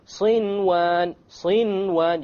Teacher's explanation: Without any ghunna, you make the noon clear and you move on. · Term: idhar